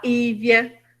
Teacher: Geralmente fala Ívia, come o L